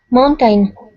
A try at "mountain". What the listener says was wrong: Spanish speakers and Portuguese speakers tend to really stress the second syllable of this word. It's really, in English, it should be very unstressed,